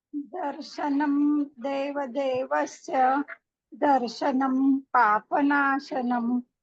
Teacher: दर्शनन नकार जैसा उच्चार होना चाहिए अनुस्वार